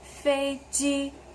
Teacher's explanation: Now, are they the same tone? Flat, flat, flat, flat. Yes, they're the same tone.